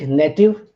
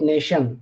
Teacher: So in ion, like we have a word like native, net, ion, and we have a word like nation. So t becomes sh. This thing happens when we attach ion to it. So this is class 1 affix, where you have a stress shift, or you have a change in sound.